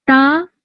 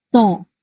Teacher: تا پتلا ہے، ٹھیک ہے، اس کو ہم باریک پڑھ رہے ہیں، اور تو کو ہم موٹا پڑھ رہے ہیں